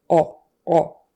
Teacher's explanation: it sounds like she's pronouncing it with the tongue in the back of her mouth